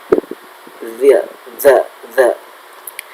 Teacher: Jadi pembacaan za itu di ujung lidah, za. Nah, lidahnya digigit depannya sedikit, za.